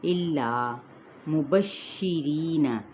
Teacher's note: ری پہ یائے مدہ اور را باریک پڑھا جائے گا